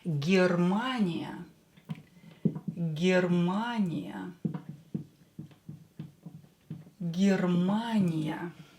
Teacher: Ye will be pronounced as E because it's not stressed. Germania, so we will pronounce it as E.